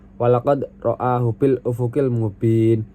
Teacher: walaqad sini baca qalqalah sugro karena dalnya dibaca mantul ringan karena sukun